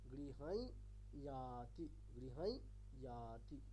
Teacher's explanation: প্রথম ইয়কারটা হবে নাকে নাকে, আর ইয়াতি এখানে যে ইয়কারটা সেটা নাকে নাকে করা যাবে না, কারণ এটা অনুনাসিক না।